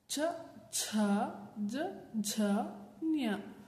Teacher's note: ಮೊದಲನೇದಕ್ಕೆ ಹೆಚ್ಚು ಉಸಿರಿನ ಅವಶ್ಯಕತೆ ಇರುವುದಿಲ್ಲ, ಎರಡನೇದಕ್ಕೆ ಮತ್ತು 4ನೇದಕ್ಕೆ ಹೆಚ್ಚು ಉಸಿರಿನ ಅವಶ್ಯಕತೆ ಇರುತ್ತೆ. ಹಾಗೆ ಮೊದಲನೇದು 3ನೇದಕ್ಕೆ ಹೆಚ್ಚು ಉಸಿರಿನ ಅವಶ್ಯಕತೆ ಇರಲ್ಲ. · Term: ಮಹಾಪ್ರಾಣ ಅಕ್ಷರಗಳು